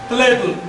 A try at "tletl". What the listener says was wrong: Bueno, pronunciamos en español tletl. Suena muy tosco. Tletl. Es con los laterales de la lengua, no con la punta.